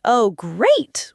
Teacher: Saying, "Oh, great." with a flat, unenthusiastic tone clearly signals sarcasm, even if the words are positive